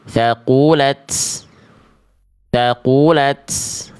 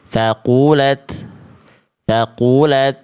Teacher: Nah, hanya percikan nafas aja. Tidak perlu sampai keluar bunyi S, ya.